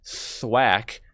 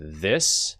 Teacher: Thwack has an unvoiced th, and this has a voiced th.